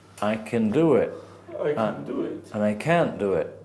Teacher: In America, the vowels can and can't almost sound the same.